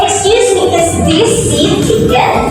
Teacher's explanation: So that your voice rises. The intonation or the pitch of your voice rises. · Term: rising intonation